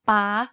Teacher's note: To perfect the high tone, focus on the pitch of your voice. In this tone, your pitch needs to be high. Stressing your syllable when speaking is also ideal in this tone.